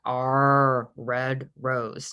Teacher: you can feel your tongue pulling back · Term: r sound